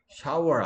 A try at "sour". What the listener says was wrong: 아니라니까 sour. Shower가 sh 없는데 왜 자꾸 쉬 소리를 내나? Sour.